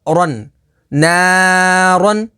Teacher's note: را کے اوپر دو زبر ہے تو اسے پر یعنی موٹا پڑھیں گے اور دو زبر کی تنوین کے بعد الف کو نہیں پڑھیں گے۔